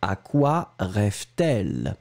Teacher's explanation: So à quoi, we start with the preposition and then quoi, then the verb rêve, then the subject elle, and between the two, you will put the T just to make it, smoother to pronounce